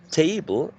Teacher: table contains two syllables, but one of them is most prominent. The first one, right? We say table and not table, right? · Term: most prominent syllable